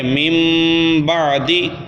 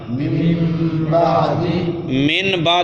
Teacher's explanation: من بعد نہیں پڑھیں گے، من بعد. نون کو نون نہیں رہا، نون کو میم سے تبدیل کریں گے، نون کو میم سے تبدیل کر دیں گے. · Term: اقلاب